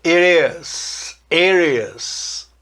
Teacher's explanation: dá para juntar o T do it com o is e virar um som meio R, meio D, meio it is, it is.